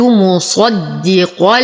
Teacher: افخم الصاد اشد الدال نفخم القاف ايضا